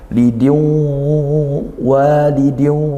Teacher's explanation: makhrajnya itu dari khayshum, yaitu dari rongga hidung, maka juga bunyi sengau dihitung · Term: gunnah